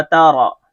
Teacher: را کے اوپر زبر اس لیے را موٹا پڑا جائے گا